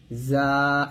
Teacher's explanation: যা উচ্চারণ করার সময় জিহ্বাটা নিচে দাঁতে লাগবে। এই যে সিন যেখান থেকে উচ্চারণ করছি ঠিক সেখান থেকে জাটা উচ্চারণ করতে হবে যা এরকম।